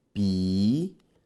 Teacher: Em Piauí, este hiato está em posição oxítona.